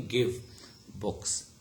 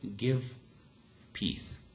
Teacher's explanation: Okay, so we will easily notice that while in the first case it is v, okay, give, but is fully voiced. Okay, but in the second case it is actually f.